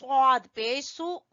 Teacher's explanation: स्वाद को मोटा पढ़ेंगे पुर पढ़ेंगे